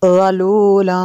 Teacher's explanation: تنوین کے بعد فا ہے حروف اخفاء میں سے، تو یہاں پہ اخفاء ہوگا، اس لیے یہاں پہ غنہ ہوا